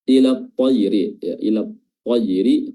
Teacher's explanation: huruf ta-nya di sini yang didahului oleh alif lam, yang dimana lamnya di sini tidak terbaca dan langsung masuk ke huruf ta. Hukumnya adalah alif lam syamsiyah ya, atau idgham syamsiyah, di idgham langsung ke huruf ta.